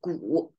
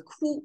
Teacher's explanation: You can see this gu act as a sound maker as well, because now it's a ku, it sounds, it shares the same, this vowel sound, except the tonation change. Gu is a third tone. And now ku is flat tone.